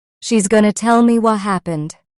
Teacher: in fast speech, even the T in what can disappear or soften. Instead of saying what happened, native speakers often say what happened.